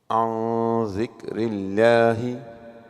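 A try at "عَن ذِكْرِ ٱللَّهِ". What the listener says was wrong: Make the ghunna a little bit thin. An zikrillah, if you want to make a stop.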